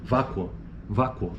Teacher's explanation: Você quase não percebe o u aqui nesse caso · U, porque o ditongo está ocorrendo na segunda sílaba, vácuo, u. O O, então, é o pico da sílaba, enquanto que esse U é a semivogal.